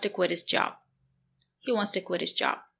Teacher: The letter T is between two vowels when you link the words, so we pronounce the letter T as a fast D.